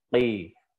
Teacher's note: Qaf ini kalau misalkan dilihat sifatnya dia ini punya sifat isti'la, tapi dia tidak punya sifat idbaq, tebal. Jadi kalau misalkan kasrah tidak diucapkan qoi, enggak, ya itu namanya ada sifat idbaqnya.